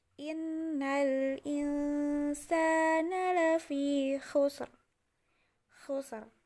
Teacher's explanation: Jadi bukan lagi khusrin tetapi jadi khusr. Rinnya menjadi ro sukun.